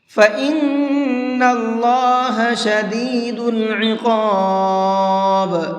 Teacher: فَإِنَّ اللَّهَ شَدِيدُ الْعِقَابِ، اس بڑے قاف کو منہ بھر کے پڑھیں گے، اور با کے اندر قلقلہ کر کے پڑھیں گے